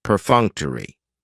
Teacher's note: the stress is on that second syllable